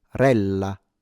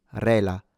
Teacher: A double L, once again, rella, rather than rela. And a slight trilled R.